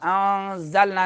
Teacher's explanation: اخفاء ہوگا. انزلنا نون کو ناک میں چھپائیں گے کیونکہ نون ساکن کے بعد زا آ رہا ہے، سیٹی والا حرف آ رہا ہے